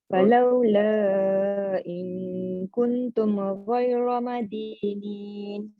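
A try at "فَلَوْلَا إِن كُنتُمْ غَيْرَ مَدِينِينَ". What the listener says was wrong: Okey, kuntum panjang sikit.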